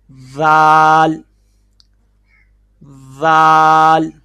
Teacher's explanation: یہ جو آپ کو تصویر کے اندر نظر آ رہا ہے یہاں پہ دیکھیں، زبان کی نوک جب اوپر والے دو دانتوں کے سرے سے لگے گی تو لفظ ادا ہوگا ذال